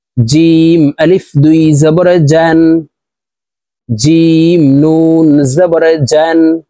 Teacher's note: জিম হরফ জিব্বার মধ্যখান থেকে উচ্চারণ করে পড়ব